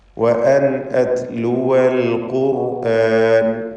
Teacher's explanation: വഅൻ ഇതിലുള്ള സാക്കിനത്തായ നൂനിനെ ഇൽഹാർ ഹൽക്കി നൽകി മണിക്കാതെ വെളിവാക്കേണ്ടതാണ്. ശേഷം ഹംസ വന്നിട്ടുണ്ട്.